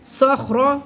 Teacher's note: خاؤ کو موٹا کرنا ہے. خر خر کی آواز آنی چاہیے.